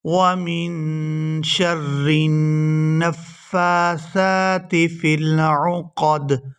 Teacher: نون مشدد پر غنہ کریں گے، آواز ناک کے اندر جائے گی اور اس کو بھی 2 سے 3 سیکنڈ ناک کے اندر روک کر رکھیں گے